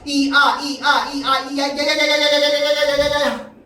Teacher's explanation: 이 소리가 아주 짧게 나고 아 소리가 나는 거야. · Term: 반모음